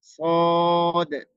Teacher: পার্থক্য গুলো বুঝতে পারবেন এরপরে আমরা সদের উচ্চারণ মাখরাজটা বলে দিয়েছি জিহ্বার আগা আর সামনের নিচের দুই দাঁতের আগার সঙ্গে উচ্চারণ হয়